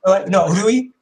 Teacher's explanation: a combination of the R and the L sound